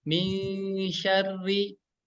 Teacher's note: Nah, dan setelahnya itu ada huruf shin ya. Huruf shin ini adalah tengah lidah kita nempel ke langit-langit yang atas. Maka ketika membaca ikhfanya harus siap-siap ya.